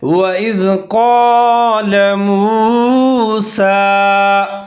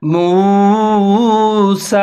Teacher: واو ساکن سے پہلے میم کے اوپر پیش ہے تو واو مدہ، اس کو آپ نے تھوڑا سا کھینچ کے پڑھنا ہے۔ سین کے اوپر کھڑا زبر ہے، لمبا کر کے پڑھنا ہے۔